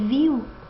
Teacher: o I, ele possui uma proeminência em relação ao U, o I é mais forte do que o U. Mesma coisa que em céu, o E é mais forte que o U, e seu, aqui também, mesmo caso. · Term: ditongo decrescente